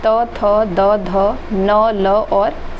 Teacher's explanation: दंत व्यंजन से त, थ, द, ध, न, ल और स आता है।